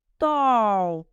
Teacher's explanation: буква А в первом слоге читается в отличие от Русского несколько вытянутыми и напряженными губами Что придает звуку а оттенок он обозначает о татары произносят русскую